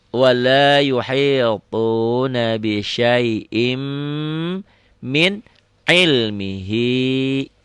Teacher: Bisyai'in ini masuk ke mim jadi idgham bigunnah.